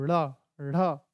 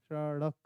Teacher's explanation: ये जो नुक्ता वाले शब्द हैं वो पटक कर बोले जाते हैं जीभ को